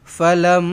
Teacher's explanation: mim sabdu dengung dua harakat. Wajibul ghunnah.